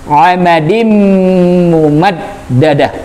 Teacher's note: di mumaddadah dalnya juga ada tasdid, maka wajib ditahan.